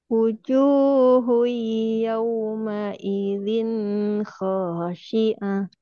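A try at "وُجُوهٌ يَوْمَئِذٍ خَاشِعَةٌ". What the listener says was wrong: naam barakallah fikum ya bagus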